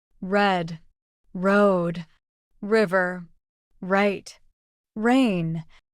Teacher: your tongue shouldn't touch the roof of your mouth or your teeth instead it pulls back slightly and the sides of your tongue lightly touch your upper molers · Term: American R